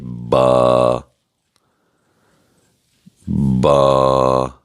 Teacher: با دونوں ہونٹوں کو جوڑ کر ہم نرمی کے ساتھ پڑھیں گے